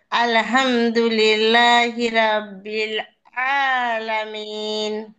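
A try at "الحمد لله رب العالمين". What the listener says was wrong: আপনার প্রথমত এখানে ভুল আছে, তারপরে এ জায়গায় রাব্বিল হয়ে গেছে একটু, সাউন্ডটা কিছুটা রব্বিল, আর এটা আলহামদু, আলহামদুলিল্লাহি রব্বিল আলামিন।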